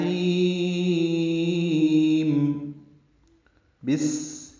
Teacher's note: یہ سین ساکن ہے، اس میں ہمس ہوگا، سانس جاری رہے گی اس کے پڑھتے ہوئے صفیر کی آواز سے سین کو ادا کریں گے۔